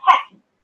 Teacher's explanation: so we have got first syllable stress